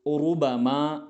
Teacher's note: यगरुर का उरुबमा, यहाँ पर रा मुतहर्रिक है यानी हरकत वाला है, इस रा को भी पुर पढ़ा जाएगा क्योंकि इस रा पर पेश आया है।